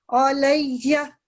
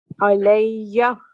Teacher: چونکہ تشدید ہے مضبوطی سے پڑھیں گے لیکن اس کو لمبا نہیں ہونے دیں گے